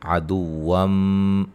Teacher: عدوم نون تنوین کا ادغام مع الغنہ